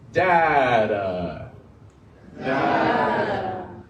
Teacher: it's a quick, quiet, it's like an R suave, right? Data. Very soft, very quick.